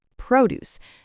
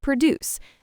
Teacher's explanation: It's a noun in this case and the stress is on the first syllable.